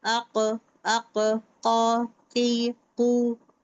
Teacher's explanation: अगर मैं कॉफ में बोलूंगी, कॉफ क्या बोलूंगी मैं, मेरा जबान जो है, मेरे जबान का पिछला हिस्सा, द एंड मतलब पिछला हिस्सा, the back of my tongue is touching the soft palate